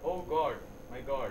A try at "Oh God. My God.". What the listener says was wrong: It's not oh God. It's like, you know, you are whispering. It's like cheating at an examination at IIT. Do it loud. You are crying to God.